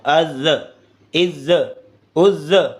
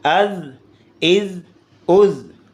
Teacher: زا بھی نرمی سے اور باریک ادا ہوتا ہے